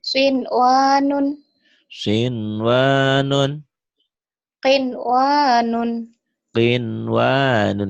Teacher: Kalau bertemu seperti ini tidak dibaca idgham tapi dibaca jelas, dibaca idhar. · Nun mati ketemu ya, nun mati ketemu ya, nun mati ketemu waw. Karena bertemu satu kata, satu gabungan, satu kalimat, tidak dibaca idgham, tapi harus dibaca idhar. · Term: idhar mutlak